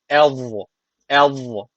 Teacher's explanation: ince kalına bağlanıyor ama peltekliği de tabii unutmuyoruz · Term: Peltek ve kalın za